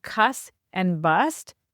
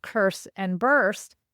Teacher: those are actually the r-less versions of what used to be pronounced curse and burst, but actually at the time when the settlers came, even in the 17th century, those words had often lost their r.